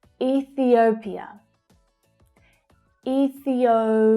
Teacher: So the third syllable there is actually the strongest. We have E, thi, o, pia.